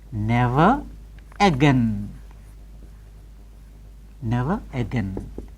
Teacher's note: so in speech we retain the R if it is followed by a vowel